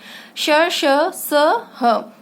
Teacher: उष्म इसलिए क्योंकि इनमें एक रगड़ उत्पन्न होती है जब हम इन्हें बोलते हैं। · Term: उष्म वर्ण